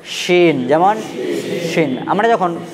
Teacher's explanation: এবং যার মধ্যে নোক্তা থাকবে তিনটি তার সেই অক্ষরটাকে আমরা উচ্চারণ করব একটুকু মোটা করে, অর্থাৎ তালবির স দিয়ে উচ্চারণ হবে